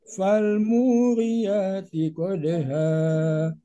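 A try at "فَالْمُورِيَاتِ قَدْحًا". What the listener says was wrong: hanya ayat keduanya masih datar. Fal muriyati qadha.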